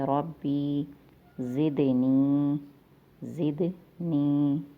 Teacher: ربی را کو موٹا پڑھ رہے ہیں، با میں صفت شدت پائی گئی ہے اس لیے با مشدد ہے، را کو با میں ملا کے پڑھیں گے۔ ربی زدنی، دال پہ قلقلہ ہو رہا ہے، دال حروف قلقلہ میں سے ہے، قلقلہ کا معنی ہے آواز کا ٹکرا کر پلٹ کر آنا یا پھر آواز میں جنبش پیدا کرنا۔